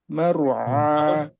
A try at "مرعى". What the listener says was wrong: ওই ওই যে এটাও খেয়াল করতে হবে, অনেক সময় আমরা মোটা করতে গেলে এই রয়ের আওয়াজ বন্ধ করে ফেলেন। মার এভাবে বলেন, মার মার, এইটা বেশি হয়ে গেছে রটা। মার